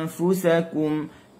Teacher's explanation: Hujung gigi saya ni dia hampir menyentuh kepada bibir bawah. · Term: ikhfa